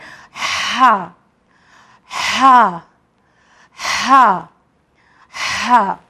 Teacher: तो ये हुर्फ हल्की जो हा है, इसे मिडल हलक से निकालेंगे